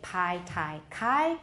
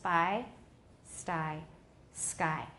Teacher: if we put an S in front of PT k PT k are no longer aspirated but they are not voiced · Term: unaspirated